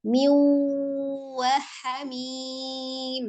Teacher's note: Dilebur bi dengan ghunnah dengan dengung. Jadi asalnya min dijadikan bacaannya miu kemudian ditahan dengan memonyongkan bibir pengucapan huruf waw. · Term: idgham bi ghunnah